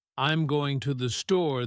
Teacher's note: the emphasis falls on going in store not I'm or to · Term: stressing certain words